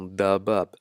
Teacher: Nous avons la lettre Dad qui se prononce aussi avec emphase